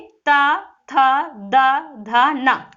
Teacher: जब आप ता, था बोलते हो तो आपकी जो जीवा है वो दांत में जाके क्या होती है, स्पर्श होती है, तो वो दंत से हो जाती है।